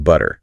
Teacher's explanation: Almost a D sound instead of a hard T. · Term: flap T